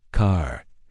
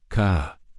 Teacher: you can clearly hear that R sound at the end. It's strong and present. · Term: strong R